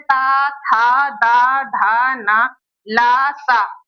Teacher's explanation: तो हमारी जीभ किसको स्पर्श कर रही है? दंत को स्पर्श कर रही है। · जब जीभ हमारी दांत को स्पर्श करती है, दंत को स्पर्श करती है, तो उस उच्चारण स्थान को बोलते हैं दंत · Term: दंत्य